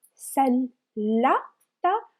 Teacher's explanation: We have shadda above lam. Sallata. So we pronounce lam twice. Sallata. And as you can remember, if we have ta marbuta with haraka, with a vowel sound, we will pronounce it like ta, because ta marbuta is a combination of two letters.